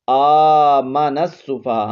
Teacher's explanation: حمزہ پر کھڑا زبر ہے، 1 الف کی مقدار کھینچیں گے، آگے نون کو سین کے ساتھ ملائیں گے، نون سین زبر نس.